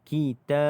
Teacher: Pada huruf ba ini, okey, dia tidak ada tanda mati, tetapi dia mati kerana kerana waqaf. Bila mati kerana waqaf, maka dia adalah qalqalah kubra.